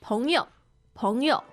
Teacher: Second and neutral tone meaning friends.